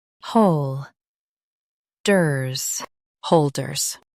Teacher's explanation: Stress hol and keep ders soft.